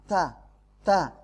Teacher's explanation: ta itu makhrajnya adalah punggung lidah bersentuhan dengan gigi seri atas bagian dalam.